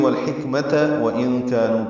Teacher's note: رہا ہے، والحکمہ ملائیں گے تو والحکمت وَإِن كَانُوا پڑھنا ہوگا، واو ہونٹوں کی نا تمام گلائی سے ادا ہوگا